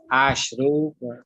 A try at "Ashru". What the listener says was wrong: Yeah, that's correct.